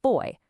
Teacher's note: Diphthongs are those cool gliding vowels where two sounds merge into one, like the oi in boy.